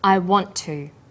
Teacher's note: The final t sound in want is held slightly longer on the tongue. Then to is pronounced. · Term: consonant plus same consonant linking